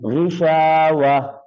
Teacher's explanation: تو اگر ساتھ نہیں ملانا تو آپ کو پتہ ہے میرا یار ابھی سانس اتنا لمبا نہیں ہے، صحیح پڑھا نہیں جاتا، تو وقف کر کے پڑھ لیں. تو پھر تا جو ہے وہ وقف کی حالت میں ہا کی آواز دے گی · وقف کی حالت میں جہاں پر تا آ جائے گول آنکھوں والا، وہ آخر میں ہا کی آواز دیتا ہے